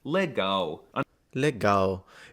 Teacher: the L is also quirky because it's often pronounced as a w